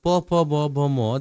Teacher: এগুলা বলতে গেলে দুই ঠোট লাগে